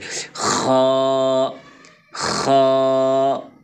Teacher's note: تھوڑا سا خا کو پر کریں گے کیونکہ یہ حروف مستعلیہ میں سے ہے